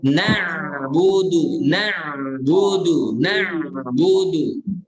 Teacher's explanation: Na'budu ain juga dialirkan. Suaranya alirkan sedikit.